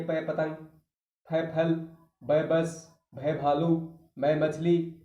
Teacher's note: ओष्ठ व्यंजन, प पतंग, फ फल, ब बस, भ भालू, मैं मछली और वह वकील, दोनों होठों को मिलाने पर ही बोले जाते हैं, इसलिए ओष्ठ व्यंजन। प फ ब, दोनों होठों को टच करते हैं, स्पर्श करते हैं दोनों होठ, ऊपर का होठ नीचे का होठ, तब ये व्यंजन बोले जाएंगे।